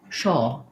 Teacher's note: for this o they're going to do kind of an aw um or oh with a schwa there instead of the r sound